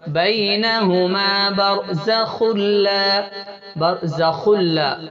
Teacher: برزخ لا، یا واو میم نون میں ادغام مع الغنہ کریں گے، لام اور را میں ادغام بلا غنہ کریں گے، یعنی صرف ادغام کریں گے، غنہ نہیں کریں گے